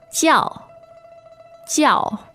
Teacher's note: 叫 is J-I-A-O in pinyin, and that's fourth tone.